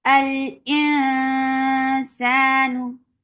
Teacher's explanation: So you should not rush. You should take time to keep the sound in your nose for a longer time. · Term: کاملہ غنہ